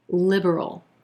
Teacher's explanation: We've got 3 syllables here with our emphasis on that first syllable and the I as in silver vowel sound.